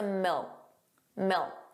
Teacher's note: So you put your your tongue in the position of a K. Milk. But you just don't push out that sound. · The final K sound, that C was not pronounced. It was just a milk.